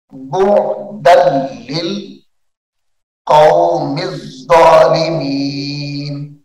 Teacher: दाल को लाम के साथ मिलाएंगे